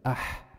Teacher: بيرجع عندي وسط الحلق عند العين والحاء